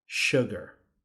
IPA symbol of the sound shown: ʊ